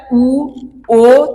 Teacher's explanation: ਜਿਨਾਂ ਨੂੰ ਉਚਾਰਨ ਕਰਨ ਸਮੇਂ ਸਾਡੀ ਜੀਭ ਦਾ ਜਿਹੜਾ ਉਹ ਪਿਛਲਾ ਹਿੱਸਾ ਉੱਪਰ ਉੱਠਦਾ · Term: ਪਿਛਲੇ ਸਵਰ